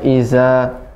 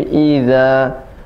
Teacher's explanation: za-nya tidak sampai ada desis, ya, tidak boleh iza, ya, tapi idza.